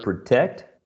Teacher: a two syllable verb which is stressed on the second syllable